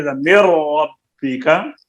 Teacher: ادغام تام. نون کا را میں ادغام تام ہے